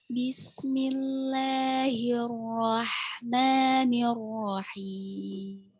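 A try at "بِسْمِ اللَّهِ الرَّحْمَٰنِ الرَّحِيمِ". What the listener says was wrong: Memnya yang suka hilang, Ustaz ya?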